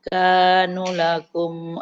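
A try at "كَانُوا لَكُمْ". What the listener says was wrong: Kanu lakum. Nunnya panjang.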